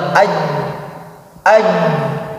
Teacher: Beda dengan jim. Kalau jim ketika ditahan, seperti misalkan aj, tidak mengalir suaranya.